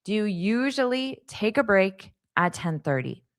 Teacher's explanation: do you can sound quite fast because do is an auxiliary verb, so it's not necessary to hear it fully